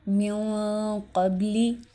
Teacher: ان میں سے کوئی بھی لفظ آئے گا تو وہاں پہ ہم نون ساکن کی آواز کو ناک میں چھپائیں گے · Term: اخفا